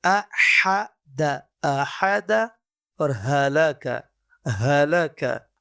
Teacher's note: احد اور ہلاکا، یہ وہ حروف ہیں ہمارے پاس جو ہمارے پاس باٹم آف دا تھروٹ اقصی حلق سے ادا ہوتے ہیں